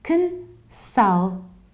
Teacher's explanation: So you reduce the very beginning and you reduce the very ending.